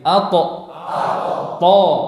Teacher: Makhrajnya sama. Ujung lidah dengan pangkal gigi seri atas.